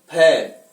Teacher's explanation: फ उच्चारण करते स्पष्ट होता है, फ यानी दोनों ओष्ठ एक दूसरे को स्पर्श कर रहे हैं, तो उच्चारण स्थान क्या हो गया, ओष्ठ हो गया।